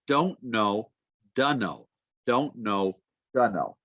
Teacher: the T usually disappears after an in sound